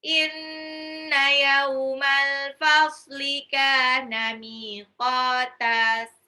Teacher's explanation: Inna, nunnya gunnah, yauma, yaunya itu sifat lin, al-fasli, alif lam qamariyah, kana, kafnya mad tabi'i 2 harokat, miqata, mimnya 2 harokat, qafnya 2 harokat